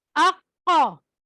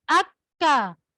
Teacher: قاف موٹا حلق سے نکلنا ہے، موٹا پروناؤنسیشن ہونی ہے، اور کاف کی پروناؤنسیشن باریک ہونی ہے